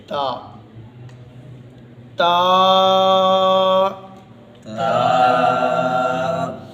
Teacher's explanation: زبان کی نوک جب دو دانتوں کے جو ثنایا علیہ کے دو دانت ہیں ان کی جڑوں پر لگے گی تو یہ تا ادا ہوگی